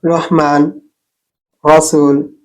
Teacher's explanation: জিবার আগা উপরের তালুর উপরের তালুতে স্পর্শ করে